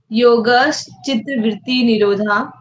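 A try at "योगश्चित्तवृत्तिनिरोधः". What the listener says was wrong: निरोधा नहीं ध निरोध फिर से बोलिए पूरा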